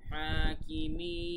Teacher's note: তো এই জন্য 3 আলিফ টান হয়েছে, জেরের বাম পাশে যজমলা ইয়া, এবং তারপরে আমরা যে থেমেছি তাই এটা মাদ্দে তবাই না হয়ে মাদ্দে আরজি হয়ে গেছে, 1 আলিফ টান না হয়ে 3 আলিফ টান হয়েছে